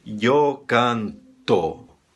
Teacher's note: Em espanhol, não, sempre vai soar O, seria yo canto, O é O em espanhol, tá bom?